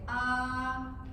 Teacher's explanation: That's the first tone of Chinese. It's a high level tone.